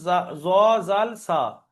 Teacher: জিভের আগা সামনের উপরের দুই দাঁতের আগার সাথে লেগে উচ্চারিত হবে, সামনের উপরের দুই দাঁতের আগার সাথে লাগিয়ে উচ্চারণ হবে, জ, জাল, সা। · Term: 12 নম্বর মাখরাজ